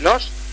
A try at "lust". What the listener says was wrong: Lust. L-U-S-T. Lust. L-U-S-T, not L-O-S-T. L-U-S-T. Lust.